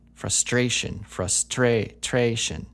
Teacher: so the stress seems to be on that a sound